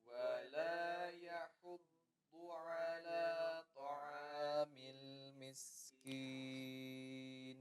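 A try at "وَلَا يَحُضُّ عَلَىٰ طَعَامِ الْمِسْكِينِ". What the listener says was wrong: Huruf ainnya dibuka ya. Ta'a, jangan dibiarkan di depan ya. La, ya, dibuka.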